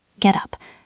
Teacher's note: The T sounds a bit like a D in American English or a crisp T in British English.